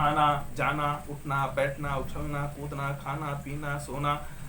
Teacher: सीधे सीधे मुख से ध्वनि निकल रही है, नासिका का कोई इसमें सहयोग नहीं हो रहा, इसलिए इन्हें हम निरनुनासिक कहते हैं।